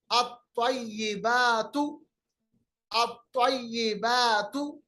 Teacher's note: لام کو ہم نے نہیں پڑھا، حالانکہ لام لکھا گیا ہے، کیونکہ طا جو ہے یہ حرف شمسی میں آتا ہے